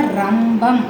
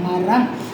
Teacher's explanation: ர அப்படிங்கும் போது பிரண்ட்ல வந்து டச் ஆகும்